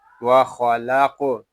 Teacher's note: قاف ساکن ہے، اس میں قلقلہ خوب ظاہر کریں گے، اس سے کو پر بھی پڑھیں گے کیونکہ یہ حروف مستعلیہ میں سے ہے۔